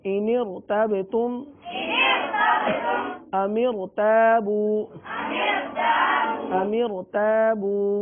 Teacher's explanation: बा पर कलकला होगा क्योंकि बा साकिन है